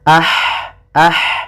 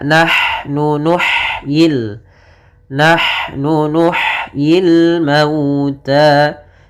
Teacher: Kemudian nahnu pada lafal nahnu di sini han-nya sifat hamasnya jelas